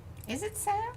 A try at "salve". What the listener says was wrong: It's salve. You don't pronounce the L. It's like salmon.